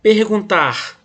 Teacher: a sílaba forte foi na última. Então eu vou chamar essa sílaba de oxítona.